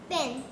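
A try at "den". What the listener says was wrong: फिर पा कहाँ से आ गया? डी, डी का साउंड क्या होता है?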